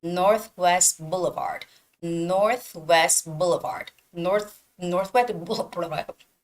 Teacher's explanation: when we put these two words together, you don't have to pronounce the T at the end of Northwest. It sounds more like Northwest Boulevard.